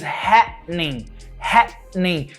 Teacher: There is a pause. There's a glottal pause.